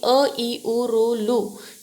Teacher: स्वरांचा उच्चार आखूड होतो त्यांचा उच्चार करण्यासाठी कमी वेळ लागतो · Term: रस्व स्वर